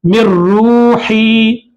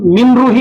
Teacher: नून की आवाज को डायरेक्ट रा में मिला देंगे और नून की आवाज बिल्कुल नहीं आना